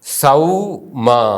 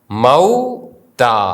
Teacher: ആ എന്ന ദീർഘസ്വരത്തിന് ശേഷം വാവ് വരുമ്പോൾ ഔ എന്ന് ഉച്ചരിക്കുന്നു